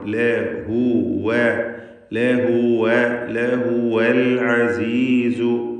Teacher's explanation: ലഹുവ എന്ന് ഹായിന് സുക്കൂനൊന്നും ആയി പോവാതെ സൂക്ഷിക്കണം.